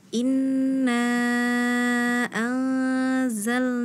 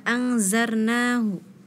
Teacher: huruf lam, ya, terdengar seperti huruf ro